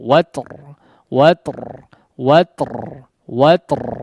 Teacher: Huruf ta juga diperhatikan ya, ada hamsnya meskipun mungkin tidak terlalu jelas ya